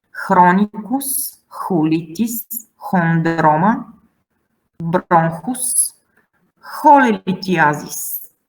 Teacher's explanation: it's not like in English ch, it's h. It sounds like h.